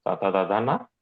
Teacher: తు అంటే తవర్గము తతదధన అలాగే లకారము సకారము ఇవన్నీ కూడా దంత్యాలు